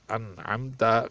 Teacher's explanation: حمزے کے بعد جو نون آ رہا ہے اس کے بعد عین ہے، یعنی حروف حلقی میں سے ہے، نون ساکن کے بعد حروف حلقی میں سے ہے، اس لیے اس پر اظہار کیا جائے گا، اخفا نہیں کیا جائے گا، انعمت۔